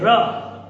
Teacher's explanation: वे वर्ण होते हैं जिनके उच्चारण में जीवा दो तीन बार कंपन करती है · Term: लुंठित वर्ण